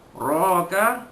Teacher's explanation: Adraka, ada dal mati di tengah-tengah kalimah, qalqalah sughra, lantunan lemah. Raka, ra alif ra tu dibaca tebal baris atas, tafkhim. Ra mat tabi'i, mat tabi'i.